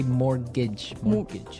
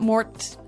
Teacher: it has a T in it, but you don't pronounce it.